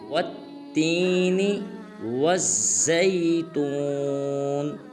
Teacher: وا کو تا مشدد کے ساتھ ملائیں گے اور سختی کے ساتھ ادا کریں گے